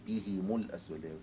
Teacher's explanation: كسر الهاء مع ضم الميم